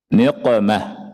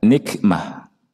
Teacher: Cuma bedanya kalau qaf, aqsa lisan nempel di langit-langit yang lunak. Kalau kaf, langit-langit yang keras dan lunak.